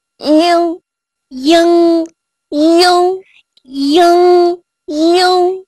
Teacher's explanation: 在发▁ing▁这个音的时候呢，要先发▁i▁的音，然后慢慢的变成鼻音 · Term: 后鼻韵母▁ing